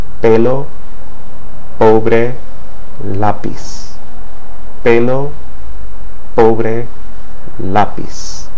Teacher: P represents a sound very similar to the English P in puff, but that puff of air that's emitted is much more subtle in Spanish in comparison to English.